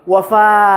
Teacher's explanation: Don't end with a kind of hamza sukun in the end, like wafa, wafa.